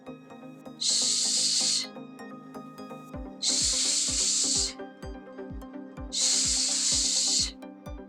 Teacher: The sh sound is unvoiced, which means that only air passes through the mouth. It's pronounced a little bit further back on the tongue, not at the blade. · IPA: /ʃ/